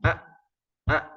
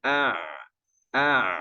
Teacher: Hamzah lebih bawah tenggorokannya Ain itu tenggorokan tengah-tengah